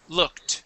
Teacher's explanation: a k sound all right and we add an e d that e d sounds like a t the word is looked